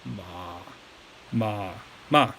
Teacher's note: the third tone here, don't worry as much about the rising aspect of it. Just worry about getting down there low, like that.